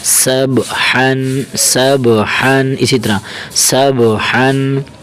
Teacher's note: اسے ہلائیں گے سین با زبر سب حا دو زبر حن اس حا کو باریک کریں گے موٹا نہیں کریں گے